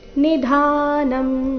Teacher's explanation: ಎಲ್ಲ ಅಕ್ಷರಗಳು ರಸ್ವ ನಿಧಾನಂ ಧ ಮಾತ್ರ ದೀರ್ಘ